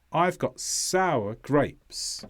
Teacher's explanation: the stress here is on sour and grapes as a whole. Sour is sometimes pronounced as one syllable, but usually as two.